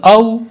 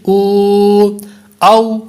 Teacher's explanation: واو ساکن سے پہلے پیش ہے، واو مدہ کا قاعدہ لگ رہا ہے، اس وجہ سے اس کو ہم نے لمبا کر کے پڑھا · پہلے واو پر واو لین کا قاعدہ لگ رہا ہے، اس لیے ہم نے اس کو لمبا نہیں کیا ، اور جو دوسرا واو ہے اس پر حمزہ واو پیش